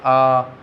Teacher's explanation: विव्रत, जिनके उच्चारण में मुंह ज़्यादा खुलता है। देखो जैसे आ की ध्वनि लाते हैं तो हमारा मुंह पूरा का पूरा खुलता है